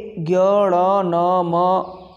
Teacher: मुख से प्लस नासिका मुख और नासिका दोनों की सहायता से इनका उच्चारण होता है है ना मुख और नासिका की सहायता से इन दोनों वर्णों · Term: अनुनासिक वर्ण